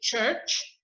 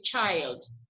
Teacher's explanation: h becomes ch and it's very different than in french ch you pronounce it almost as if there's a t in front